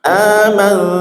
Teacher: bukan N tapi pertengahan antara N dan Ng ya Aman. Nah itu agak direnggang sedikit ujung lidahnya. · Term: ikhfa hakiki